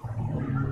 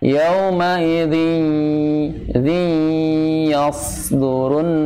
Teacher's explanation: Jadi idgham kamil tadinya nantinya. Jadi separuh masuk ke pangkal hidung, separuhnya lagi ke makhraj huruf ya. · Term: idgham naqis